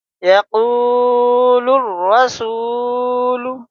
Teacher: یا زبریہ قاف واو پیش قو، یقو، لام را پیش لر، الف لام نہیں پڑھا جائے گا